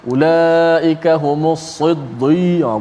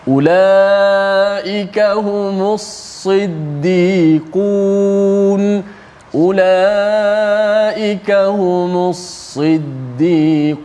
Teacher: Sad yang tebal betul, tapi dal kekalkan dia punya sifat dal, sifat yang nipis yang berbaris di bawah tu.